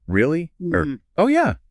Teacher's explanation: And it applies to those little responses too, like really or oh yeah said with a rising tone, they show you're actively listening and want more details